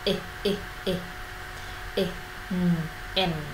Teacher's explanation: Nguyên âm ngắn âm i là cái nguyên âm mà hết sức giống âm i trong tiếng Việt, tuy nhiên nó sẽ ngắn hơn nhiều.